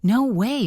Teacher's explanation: The tone of your voice should go up to show excitement. Say, no way, really, with a high intonation.